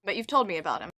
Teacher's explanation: it's the verb told but you've told me about him the sentence peaks with that word